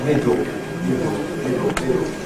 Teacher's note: Notice you don't have lateral release anymore in middle because you don't have a lateral. You get this vowel, middle, middle, middle, middle.